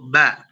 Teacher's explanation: bertemunya bibir atas dan bibir bawah jangan ada nafas yang keluar karena Mbak punya sifat jair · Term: huruf ba